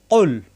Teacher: জিহ্বার গোড়া থেকে উচ্চারণ হবে